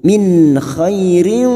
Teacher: nun sukun bertemu ko idhar halqi kita baca jelas tanpa mendengung